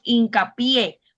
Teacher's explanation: La mayor fuerza cuando pronunciamos esas palabras, si decimos hincapié, usted se da cuenta que está en la última sílaba, la fuerza. · Porque tiene la sílaba tónica al final y es una palabra aguda.